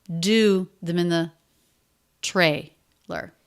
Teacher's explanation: Them in the, flatter, lower in pitch, definitely unstressed, definitely not with this up-down curve with the length of a stressed syllable.